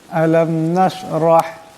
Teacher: এখানে বড়হা আওয়াজটা গলা থেকে আনতে হবে। তার আগে রা আছে, রার উপর জবর, এরাকে মোটা করিয়া পড়তে হবে।